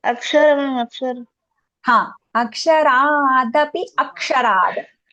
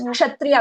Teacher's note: ksha is a joint consonant, right? Because kshatriya, when we say that, half ka with a sha.